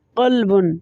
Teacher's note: قلب قاف جو ہے لحات یعنی کوے کے متصل زبان کی جڑ جب اوپر کے تالو سے ٹکر کھائے تو موٹا کر کے ادا کیا جاتا ہے